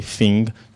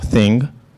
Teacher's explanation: you may find some Brazilian people replacing the TH sound sometimes by the F sound